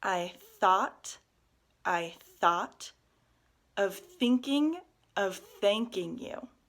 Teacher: a lot of the th sounds in this tongue twister are unvoiced they're that lighter sound of some thinking alright so you can